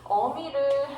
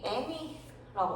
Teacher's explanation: 어미보다는 애미로 발음을 하는 것이 혀가 덜 움직인다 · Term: 전설모음화